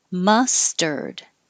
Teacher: the vowel in ma is the schwa which is the uh sound